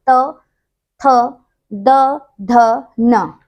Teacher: आप बोलेंगे ना त, जो हमारी जीभ है ना वो दांतों के ऊपर वाले हिस्से को टच करती है, त थ द ध न। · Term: दंत्य